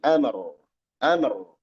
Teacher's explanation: Di sini dibaca tebal juga rnya ya.